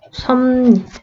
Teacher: 비읍은 뭐로 변해야 돼? 미음으로 변하고 리을은 니은으로 변하고 섭리. 이렇게 발음된다라는 거예요. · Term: 비음화